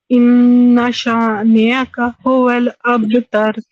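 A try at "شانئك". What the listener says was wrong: دیکھیے شانی اکا نے نہیں بولیں گے، شانی اکا نی بولیں گے، شانی اکا، زیر کی ادائیگی ہمیں ای کے ساؤنڈ کے ساتھ کرنی ہے، جیسے فصلی، فصلی نہیں بولیں گے، ہے نا.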